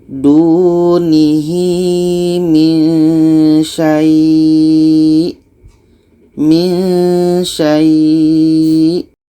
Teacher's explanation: kita panjangkan minimum dua harakat. Setelah itu kita matikan hamzahnya. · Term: mad lain